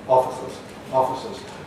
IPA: ˈɒfɪsəz